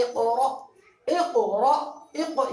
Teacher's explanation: پھر یہ حمزہ ساکنہ کی مثال، اس حمزہ الف ہے اور الف کے اوپر حمزہ ہے اور اس کے اوپر جزم ہے، تو اس کو جھٹکا دے کر پڑھیں گے